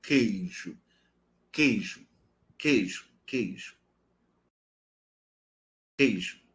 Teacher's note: Então, você nota que a parte posterior da língua ela entra. O articulador passivo é o palato mole.